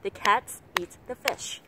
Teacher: Bởi vì là có cái hai cái từ trong này không được nhấn, đó là từ hai từ the.